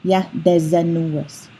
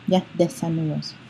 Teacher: the S would be between two vowels and become a Z sound. And we'd have yah de zenuous, which isn't how we pronounce that.